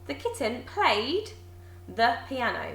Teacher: you can hear how that ed, those 2 letters, sounds like a d this time